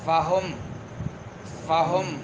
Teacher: نچلے ہونٹ کے اندرونی حصہ جب سامنے اوپر والے دانتوں کے سروں کے نیچے آ جاتی ہے تو فا ادا ہوتا ہے